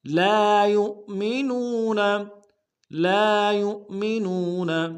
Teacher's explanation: یا کو حمزہ کے ساتھ ملائیں گے، حمزہ بشکل واو ہے، جھٹکا دیں گے. اور نو میں واو مدہ ہے، اس کو ایک الف دال میں کھینچیں گے